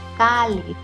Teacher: En este caso, la palabra tiene su sílaba tónica en la penúltima. Ahora bien, como termina en una consonante Z que no es N o S o vocal, entonces sí lleva la tilde.